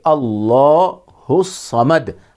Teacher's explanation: آگے ہے اللہ الصمد، یہاں بھی اللہ کا لام موٹا پڑھیں گے، پر پڑھیں گے، اللہ الصمد۔ ہا کو ملائیں گے صاد کے ساتھ، بیچ میں الف اور لام نہیں پڑھیں گے